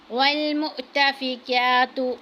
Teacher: قبلہ والمؤتفکات، اب حمزہ ساکن ہے، جب بھی حمزہ کے اوپر ساکن یعنی جزم کا ہوگا، جزم ہوگی تو اس کو ہم جھٹکا دے کے پڑھیں گے۔ والمؤتفکات، اب کاف کو باریک پڑھنا ہے، اس کے اوپر کھڑی زبر ہے، اس کو تھوڑا سا کھینچنا ہے۔